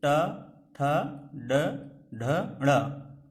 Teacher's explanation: मूर्धन्य को देखिए, इनका उच्चारण जस्ट हमारे जो दांत हैं, दांत के थोड़ा सा पीछे और तालव्य से थोड़ा सा आगे का जो भाग है वहां से इसका उच्चारण होता है